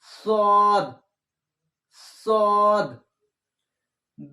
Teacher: নিচে জিহ্বা থাকবে কিন্তু মোটা হবে